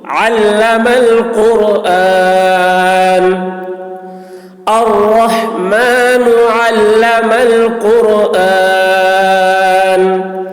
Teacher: عین حلق سے ادا کریں گے، قاف کی آواز موٹی ہوگی اور را کی آواز بھی موٹی ہوگی